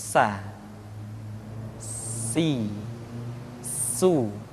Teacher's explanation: Di antara sifat yang menonjol ketika kita mengucapkan huruf sa atau huruf sin adalah sifat as-safir, di mana ketika kita mengucapkan huruf sa ada suara tambahan yang menyerupai dengan suara belalang. Sa, si, su.